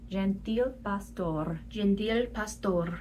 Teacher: the R's are all rolled or flipped, just like Spanish